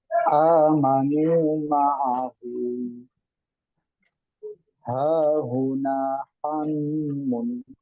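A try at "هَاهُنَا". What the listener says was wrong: Ustaz, untuk di dhomatain sempurnakan U-nya, ulangi. Huna.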